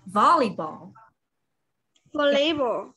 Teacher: Remember the stress is on the first syllable.